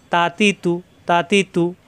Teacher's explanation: জিহ্বার আগা উপরে দাঁতের গোড়ায়